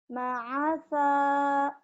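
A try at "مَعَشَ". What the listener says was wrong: Ma'asya, shinnya tuh belum keluar. Ma'asya, iya, ma'asya.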